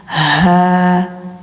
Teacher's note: Lahu, ini haknya hak besar nih ya. Hak besar tenggorokan dalam.